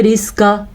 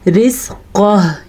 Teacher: हा की आवाज़ वक्फ़ की सूरत में ज़रूर आनी चाहिए